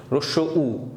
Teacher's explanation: রস্বউ যখন আমরা উচ্চারণ করি সেক্ষেত্রে আমাদের জিহ্বাটার অবস্থান হয়ে যায় পশ্চাতে, অর্থাৎ পিছনের দিকে চলে যায়, ঠিক আছে। এবং আমাদের জিহ্বার উচ্চতা কিন্তু উপরের দিকেই থাকে, পিছনে কিন্তু উপরে, ঠিক আছে।